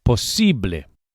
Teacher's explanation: And the final E sound, as always in Spanish, is a pure vowel, not A. Don't say posible, but posible.